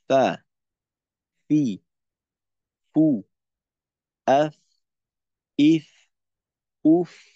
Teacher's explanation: নিচের ঠোঁটের পেট সামনের উপরের দুই দাঁতের আগার সঙ্গে লাগাইয়ে উচ্চারিত হয় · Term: ফা এর উচ্চারণ